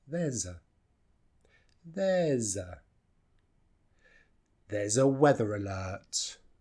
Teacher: And of course the S is more like a Z. Well, it is a Z.